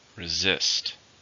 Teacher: How many syllables are in the word resist? 2. Stress on the second.